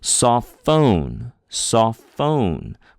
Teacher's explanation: We put a little more oomph on the phone syllable, right? Saw is the first syllable, saw, and then phone.